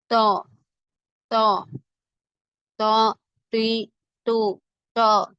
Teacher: நாவின் நுனி மேல் முன் நடுப்பற்களின் வேரில் நன்கு அழுத்தும் போது உண்டாகிறது